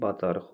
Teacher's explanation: Bacarıq sözü sonu q ilə bitən milli sözdür və q söz tək işlənəndə demişdik ki, x kimi tələffüz olunacaq.